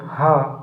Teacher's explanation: जिन व्यंजन ध्वनियों के उच्चारण में मुख गुहा खुली रहती है और वायु बंद कंठ को खोलकर झटके से बाहर निकलती है, उसे हम काकल व्यंजन कहते हैं।